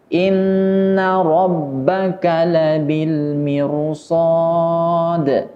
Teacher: Huruf ra, mirsad harus dibaca tebal.